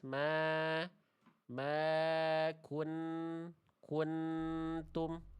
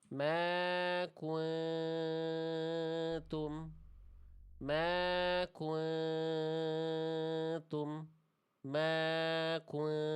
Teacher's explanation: Harusnya dibaca samar bunyi nunnya ya. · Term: ikhfa hakiki